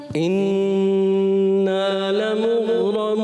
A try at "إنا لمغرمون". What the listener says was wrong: نون مشدد میں غنہ بھی کرنا ہے کلم کا, اور لمغرمون میں غین میں قلقلہ نہیں.